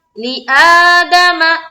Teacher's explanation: حمزہ کو کھینچیں گے کیونکہ اس کے اوپر کیا ہے کھڑا زبر ہے